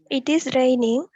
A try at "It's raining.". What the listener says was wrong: அழகா சொல்லுங்க. It's raining. சேர்த்து சொல்லுங்க.